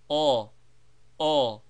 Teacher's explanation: pronounced shortly and with the lips placed roundly as if for saying O